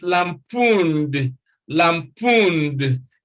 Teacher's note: the sound is also d is lampooned lampooned because n is a voiced sound